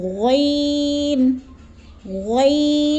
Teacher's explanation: غین کو پر کر کے پڑھا جاتا ہے موٹا کر کے